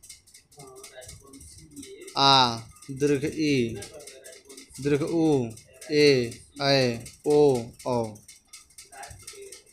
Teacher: जिन स्वरों के उच्चारण में मूल स्वरों से दुगना समय लगता है, वे दीर्घ स्वर कहलाते हैं।